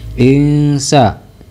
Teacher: ikhfa Hakiki sebab nun sukun bertemu dengan huruf Sin